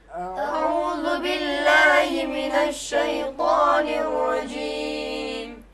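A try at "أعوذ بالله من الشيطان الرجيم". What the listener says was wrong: اب اعوذ باللہ پڑھتے وقت اعوذ باللہ من الشیطان الرجیم یہ صحیح نہیں ہے۔ اب جواب دے دیں او۔ دیکھو اب عربی حرف آیا عین، یہاں پہ عربی لہجے میں ادا کرنا پڑے گا۔ او، ذو، یہ زال، ذو، بل، لا، ہی، می، نش، شی، طا، نر،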